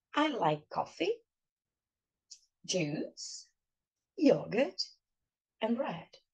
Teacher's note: Numa lista que você enumera os itens, no inglês é sabido de que você tem que subir a entonação. Quando você está enumerando, no último item cai a entonação.